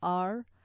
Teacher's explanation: So this ra is different, completely different to the English r. Okay, when you say r, the tongue has just rolled back and it doesn't even touch the top palate at all. In Arabic, the ra touches and it's quite forward.